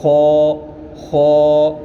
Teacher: یہ خا جو ہے اس کو موٹی آواز کر کے خا اس طرح پڑھا جائے گا۔ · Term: حروف مستعلیہ